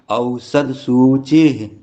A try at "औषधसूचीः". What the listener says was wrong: सु और ची हरफ पे दीर्घ है, तो दोनों दीर्घ बोलिए।